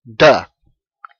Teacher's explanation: presses about the middle of the roof of your mouth and you use your vocal chords and you get duh · You can pronounce it as duh, a voiced, what I call a voiced, because you use your vocal cords. Your tongue presses about the middle of the roof of your mouth, and you use your vocal cords, and you get duh. The second way is you pronounce what we call an unvoiced consonant, a hard t sound.